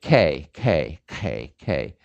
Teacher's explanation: now say for me k k k where is your tongue it's stopping the airflow at the top of your mouth and thus linguistically this thing is called a stop · king sejong said that this k is a velar sound the velum is this top of your mouth